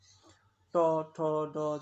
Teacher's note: ট ঠ ড যখন বলবা তখন কিন্তু দাঁতের একটু উপরে যাচ্ছে জিহ্বা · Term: মূর্ধন্য ব্যঞ্জন